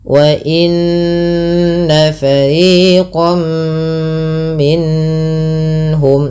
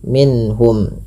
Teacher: Izhar artinya jelas, halqi berarti hurufnya yang dikeluarkan dari tenggorokan, yaitu karena ha termasuk huruf tenggorokan dan sebelumnya nun, maka suara nunnya harus jelas tanpa ditahan, tanpa ada penahanan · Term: izhar halqi